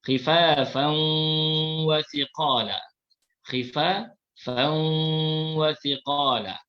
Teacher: Cara bacaan idgham ma'al ghunnah iaitu bunyi tanwin dimasukkan ke dalam waw, kemudian kita dengungkan dua harakat